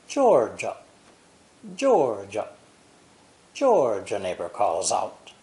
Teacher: The words George and a are linked with a J sound.